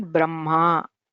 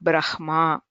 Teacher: the traditional pronunciation for these letters is where the Nakara or the Makara is pronounced first